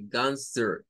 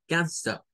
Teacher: como al estilo británico suena con el schwa